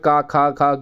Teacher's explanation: कंठ से जैसे क वर्ग में क, ख, ख, घ आते हैं तो ये सारे आपके कंठ से बोले जाते हैं